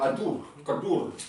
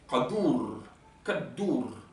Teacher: On écrira le Q, mais quand on voit un Q, il ne se prononce pas Q, il se prononce ka. Oh, c'est au fond de la gorge. Et sourd.